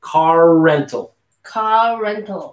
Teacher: there's no wall between car and rental so we're going to carry the r a little bit here